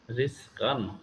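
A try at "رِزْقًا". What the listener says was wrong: কান না কন, ক দন্তান ন কন।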